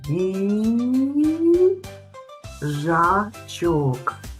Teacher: Ми чуємо звук й. Він приголосний, м'який.